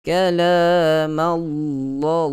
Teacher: tentu sekali huruf lam pada kalimah Allah itu kita bacakan dengan tebal, sebut dengan tebal.